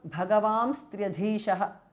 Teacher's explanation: Bhagavams Tryadhishaha because of Sandhi. The N changes to Anuswara and a S comes in between.